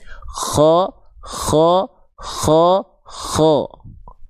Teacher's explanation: Jadi, bunyi tebalnya itu vokal O itu terjadi karena ada tumpuan pangkal lidah yang naik, bukan karena kita memonyongkan mulut